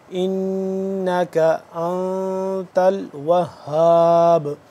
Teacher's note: اس نون کو غنہ ہے مطلب کہ تھوڑی دیر کے لیے نون غنہ جو ہوتا ہے، نون مشدد اور میم مشدد کی آواز کو ایک الف کے برابر لمبا کرنا